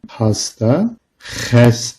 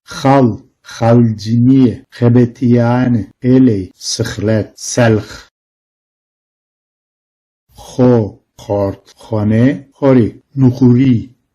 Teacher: H normal H sesinden biraz daha sert ve hırıltılıdır. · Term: gırtlaksı bir H sesi